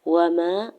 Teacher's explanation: واو کے اوپر سنگل زبر جلدی سے ادا کرنا ہے، الف سے پہلے میم کے اوپر زبر ہے، الف مدہ ہو رہا ہے تو حرکت کھینچ کے ادا کریں گے